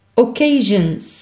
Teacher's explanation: Le S est prononcé za. Pourquoi? Parce qu'il est précédé de na. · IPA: /z/